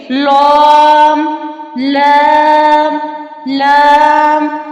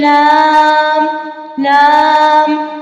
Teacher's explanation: لام کو جب ہم ادا کرتے ہیں تو زبان کی جو کروٹ ہے اوپر کی داڑ والے دانتوں کے ساتھ لگتی ہے مسوڑوں سے، لام، لام، لام، یعنی زبان کی نوک اوپر کے دانتوں کے مسوڑوں سے لگتی ہے